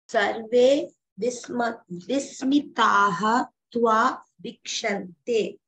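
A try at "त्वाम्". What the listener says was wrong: Atra it's a tvam. The dot is missing. Tvam.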